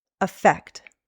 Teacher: The first with an A starts with a schwa sound.